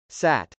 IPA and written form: sˈæt (sat)